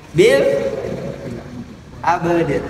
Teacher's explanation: Ayat 2 qalqalah yang berderetan. Harus dibaca dua-duanya dengan jelas qalqalahnya.